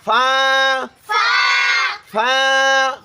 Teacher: নিচের ঠোঁটের পেট, সামনের উপরের 2 দাঁতের আগার সঙ্গে লাগাইয়া